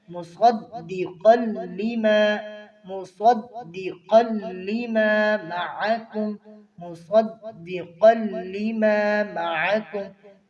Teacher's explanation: صاد اور قاف حروف مستعلیہ میں سے ہیں، یہ ہر حالت میں پر پڑے جائیں گے، تو دال کو باریک کرنا ہے یہاں پر، اور مشدد بھی ہے، مشدد کو سختی کے ساتھ پڑھتے ہیں، مصدقا لما، مصدقا لما معکم، مصدقا لما معکم۔